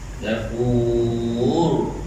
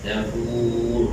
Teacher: ra itu tebal. Dafur. Gulungkan sikit bunyi dia